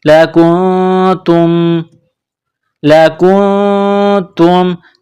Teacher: نون کے ساتھ ملانا ہے، نون ساکن کے بعد تا ہے، حروف اخفا ہے تو یہاں غنہ کریں گے، آواز ناک میں چھپائیں گے